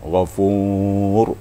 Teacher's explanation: ra-nya harus tebal sedikit, walaupun tidak setebal baris di atas, tapi harus tebal